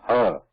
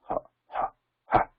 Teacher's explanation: when visarga is pronounced, the vibrations should be absent